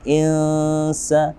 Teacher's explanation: nun sukun bertemu dengan sin. Di sini kita menyebutnya dengan ikhfa haqiqi. Kita samarkan